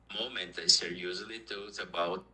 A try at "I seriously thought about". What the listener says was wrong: Okay, this word is seriously. And the mistake was here. You said don't. This is thought. Because it's the past of think. Yeah, I thought. I seriously thought about.